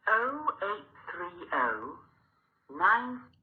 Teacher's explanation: She was saying 083. So 8 was not said as 8. The T sound was not heard.